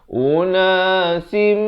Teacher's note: Masuk beserta dengung kadar panjang 2 harakat. Daripada unasin jadi unasim. Tetapi dipanjangkan dan didengungkan 2 harakat. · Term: idgham bi gunnah